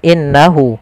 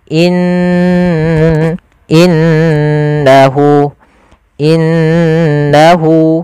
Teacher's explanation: ditahan dulu gunahnya dimasukkan ke rongga hidung kita in inahu innahu ahah seperti itu kesalahan yang terjadi tidak menahan